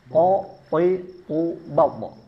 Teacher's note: Dari segi nafas dia bersifat jahr. Artinya tidak boleh ada nafas yang keluar. Meskipun qalqalahnya ada nanti bat tapi masih ada nafas keluar.